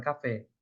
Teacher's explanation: A oxítona é quando o som forte está na última, como na palavra café.